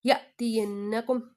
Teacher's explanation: نون مشدد کا غنہ کریں گے